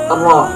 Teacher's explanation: Yang keenam adalah inhiraf, yaitu benturan ujung lidah condong ke punggung lidah. · Makhrajul huruf ro terletak pada ujung lidah yang mengarah sedikit ke punggung lidah sesudah makhraj huruf nun bertemu dengan bagian di atas gigi seri atas. · takrir, yaitu satu kali getaran halus di ujung lidah.